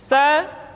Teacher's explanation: dikeluarkan dengan menyentuhkan ujung lidah kita dengan dinding dua gigi seri bagian atas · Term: huruf tah